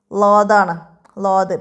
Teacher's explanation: നാവിന്റെ അരികും മേലെ അണപ്പല്ലുകളും